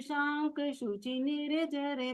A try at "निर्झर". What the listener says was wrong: निर्झर, निर्झर, निर्झर नहीं, र को पूरा नहीं लेना वहां पर, निर्झर वारी धारा।